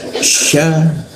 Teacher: huruf sya di tengah-tengah lidah. Sya ada rongga udara sedikit ya, jadi hembusannya cukup keras.